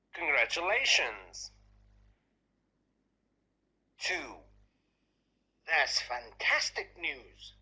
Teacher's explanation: about responding to good news, the intonation somehow rises, then comes down.